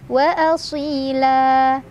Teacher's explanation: Si mad tabi'i karena ada ya sukun sebelumnya kasrah, dibaca panjang dua harokat. Wa asila. La mad iwad karena ada fathah tanwin yang diwakafkan.